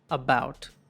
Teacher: ఈ ష్వా శబ్దము కంప్లీట్గా అన్స్ట్రెస్డ్గా ఉంది, అంటే దీన్ని పలికే డ్యూరేషన్ ఇంకా దీన్ని పలికే వాల్యూమ్ కూడా చాలా తక్కువగా ఉంది. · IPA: /ə/